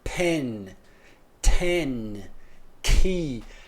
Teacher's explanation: a gente solta um arzinho a mais quando a gente tá falando o p o t e o k em início de palavras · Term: aspiration